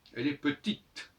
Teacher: Croire que quand on dit petite, on entend le E, non, on n'entend pas le E. On entend le T.